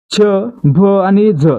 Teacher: छ भ आणि झ यांचा उच्चार करताना ह चा उच्चार देखील होतोय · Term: महाप्राण वर्ण